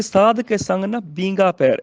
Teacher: ਇੱਥੇ ਬੀਂਗਾ ਬਿਹਾਰੀ ਬੱਬੇ ਨੂੰ ਜਿਹੜੀ ਲੱਗੀ ਹੈ ਉਹਦਾ ਨਾਸਕੀ ਉਚਾਰਨ ਕਰਦਾ ਹੈ ਬਿੰਦੀ ਦੇ ਨਾਲ